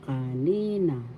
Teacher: First syllable ka, second syllable ni, third syllable na. Kanina. Second syllable has the accent.